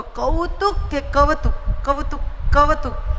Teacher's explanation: ગૌરી ઉની જગ્યાએ વ સંભળાય છે.